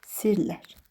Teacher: Məsələn, yazılışda sirlər yazırıq, tələffüzdə sirlər. Yəni, r-nın biri tələffüzdə düşür.